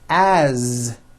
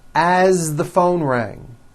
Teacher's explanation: As, you pronounce it with a voiced Z.